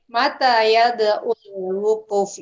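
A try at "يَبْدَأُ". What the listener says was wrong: Bukan ain. Hamzah itu berada di tenggorokan paling bawah. Kalau ibu tadi bilang yabda'u pakai ain, itu artinya berbuat bid'ah, Bu.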